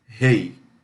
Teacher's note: quando você diz rei, você fala o E mais forte que o I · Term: ditongo